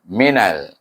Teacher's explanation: Mina ini iaitu tak ada hukum apa-apa, cuma selepas na itu ada hukum idgham samsi juga, iaitu huruf nun itu diidghamkan dengan huruf lam. Sebab huruf lam adalah huruf samsiah.